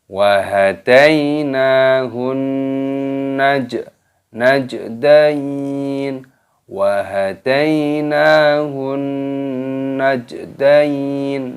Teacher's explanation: Jimnya berharokat sukun, ini dimatikan di qalqalah. Najdain, ya-nya sukun, dimatikan nunnya, maka cara membacanya najdain.